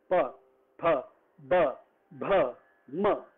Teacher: दोनों होंठ से निकलता है, सिर्फ होंठ होंठ का इस्तेमाल है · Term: प वाले वर्ग